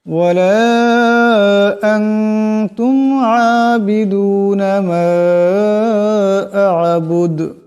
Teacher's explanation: মিম আলিফ মদ জবর মা, হামজা আইন জবর আ, বা পেশ বু, দাল পেশ দু, দাল পেশ দু, মা আ'বুদু, কিন্তু এখানে দমসালে দাল সাকিন হয়ে যাবে এবং দালের উচ্চারণটি একটি টক্কর খাবে, দাল কলকলার হরফ।